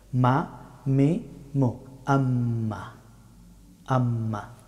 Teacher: মিম হরফটি উচ্চারিত হয় দুই ঠোঁট বন্ধ করে, তবে ঠোঁটের শুকনা অংশ থেকে মিম হরফটি উচ্চারিত হয়।